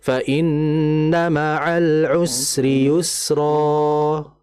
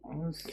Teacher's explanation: mad iwad ini termasuk mad asli yaitu dibaca dua harakat maka enggak boleh lebih